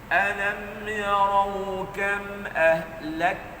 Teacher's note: Suara tu mati dulu. Lepas tu after selepas sekat suara, baru letak angin pada kaf tu.